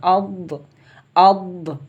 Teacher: آگے لفظ ہے ضاد، اس میں ہوتی ہے استطالت۔ استطالت کا مطلب ہوتا ہے ضاد کی آواز مخرج میں رکے، تھوڑی دیر رکے۔